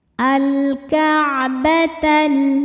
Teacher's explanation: lam dibunyikan dengan jelas atau dinamakan dengan idhar qomari